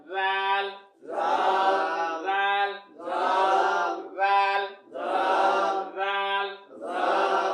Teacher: জাল হরফ জিহ্বার আগা থেকে নরম করে পড়তে হয়